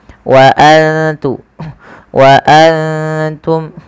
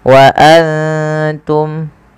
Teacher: Kita baca dengan bacaan ikhfa, yaitu cara membacanya menyamarkan suara nunnya kepada huruf ta. Wa antum, ya seperti itu.